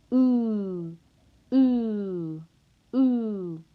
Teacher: To produce oo, the back of the tongue must be high, and your lips must be rounded, and your tongue will be tense. So you'll feel a lot of tension. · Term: oo sound